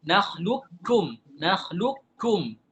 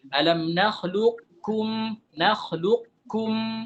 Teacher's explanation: Jadi qaf jadi kaf. Ada yang mengidghamkannya tapi idghamnya setengah-setengah gitu. Jadi qafnya masih ada, masih tebal. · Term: idgham naqis